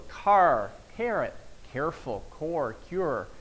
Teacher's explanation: the tongue has bent back more than in the are in standard American English · And in Texas, we have an R that's so much stronger, the tongue is bent back a little more, it's a bit more retroflex.